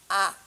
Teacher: আচ্ছা, জিভ স্বাভাবিক অবস্থায় থেকে সামনের দিকে, জিভ স্বাভাবিক অবস্থায় থেকে অর্থাৎ সামনে কিংবা পিছনে না সরে যেসব স্বরধ্বনি উচ্চারিত হয় তাকে বলা হয় হচ্ছে কি মধ্য স্বরধ্বনি। যেমন আ, দেখো জিভটা মাঝখানে থেকে গেল, মধ্য স্বরধ্বনি